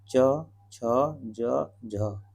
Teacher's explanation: आगे देखिए अब स्पर्श संघर्षी व्यंजन, संघर्षी व्यंजन स्पर्श संघर्ष, वे व्यंजन वर्ण जिनका उच्चारण करते समय वायु का पहला भाग तो स्पर्शी होता है लेकिन बाद वाला भाग अपेक्षाकृत संघर्षी होता है, उन्हें हम क्या कहते हैं स्पर्श संघर्षी कहा जाता है।